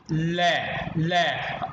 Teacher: जीभ जो है ना वो दांतों के नीचे आ गई है, इसलिए ये दंत का प्रयोग हो गया